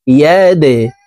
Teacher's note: দাল কলকলার হরফ নিচের দিকে ধাবিত করে ধাক্কা দিয়ে উচ্চারণ করতে হবে।